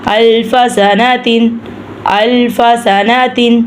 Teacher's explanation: اب ہم یہاں پہ تا کی جگہ پہ ہم ہا کی آواز نکالیں گے، نہیں تو ہم وقف نہیں کریں گے۔